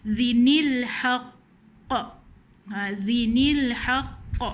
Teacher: Jadi tanwin ni ada bunyi nun mati kan. Jadi nun mati ini dihidupkan di baris bawah. Jadi kat sini kita kena tambah ada baris bawah.